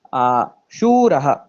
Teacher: Shuraha, there is a visarga after Shura.